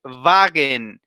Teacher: Por eso es Volks, que significa del pueblo, y la W se pronuncia como una V para nosotros.